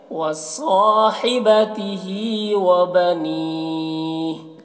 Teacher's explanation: صاد کو موٹا کر کے اور ہا کو حلق سے ادا کریں گے